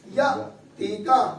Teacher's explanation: حمزہ ساکن کو ہم جھٹکا دے کے پڑھیں گے. آواز کی جنبش ہوگی